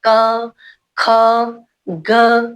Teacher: अब क ख ग घ घ बोलते हुए कंठ को, गले को छूती है।